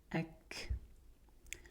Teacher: kaf is not like kha or qaf, it has air